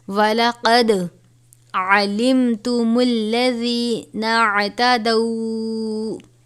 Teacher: وَلَقَدْ، اب یہاں پر دال ہے، قاف کو پر پڑھیں گے. دال حرف قلقلہ میں سے ہے تو ہم دال پر قلقلہ کریں گے